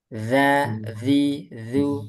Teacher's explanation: Ujung lidah bertemu dengan ujung gigi seri atas. Nanti gampangannya digigit atau seperti digigit. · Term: zal